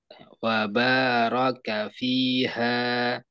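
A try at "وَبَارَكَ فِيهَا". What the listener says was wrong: Harusnya tebal. Wabaraka fiha.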